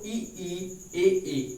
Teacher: अग्र स्वर जब भी हम इनका उच्चारण करते हैं तो ई ए यानी कि जीभ का जो अगला हिस्सा है, अगला भाग है, वह काम करता है, इसीलिए इसे हम अग्र स्वर कहते हैं।